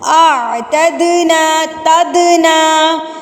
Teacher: دال حروف قلقلہ میں سے ہے، اس کو ہم قلقلہ کریں گے یہاں پر